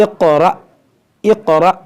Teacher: اور یہاں پر دیکھیں یہ حمزہ اور حمزہ ساکنہ ہے تو اس میں جھٹکا ہوگا. یہ قاف حروف مشتعلیہ حروف قلقلہ ہے تو اس کو موٹا بھی کریں گے، اس میں قلقلہ بھی کریں گے